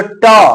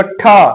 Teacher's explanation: ट में कम हवा, ठीक, और ठ बोलो तो ठ, थोड़ा हमको भार भी देना पड़ रहा है मुंह पे, जीभ पे, और हवा भी ज्यादा मात्रा में निकल रही है